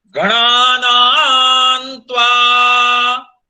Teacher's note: ये गणानान जो है वो दीर्घ स्वरिता है, उसको लंबा खींच रहे हैं।